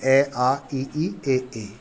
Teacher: अव्रतमुखी होता है, स्वरों का उच्चारण करते समय होठ गोलाकार नहीं होते हैं।